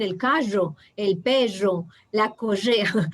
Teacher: las personas de Bolivia la R la arrastran mucho